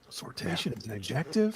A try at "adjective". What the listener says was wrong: No, you're putting the emphasis on the wrong syllable. It's an adjective.